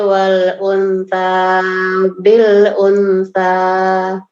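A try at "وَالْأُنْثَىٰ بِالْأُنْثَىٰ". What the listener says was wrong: Ditahan lagi. Wal-unsa ikhfa. Wal-unsa bil-unsa.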